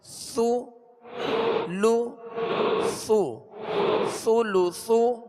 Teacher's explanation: اس میں سختی نہ ہو، ثا کو نرمی کے ساتھ اور باریک پڑھیں گے